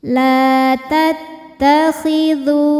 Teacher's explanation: Karena ada waw mati didahului harokat dhammah. Cara membacanya huruf dzal dipanjangkan 2 harokat. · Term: mad tabi'i dhahiri